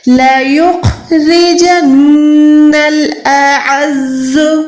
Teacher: الف اور عین میں فرق رکھیں، زا پہ وسل ساؤنڈ یعنی سیٹی کی آواز دیں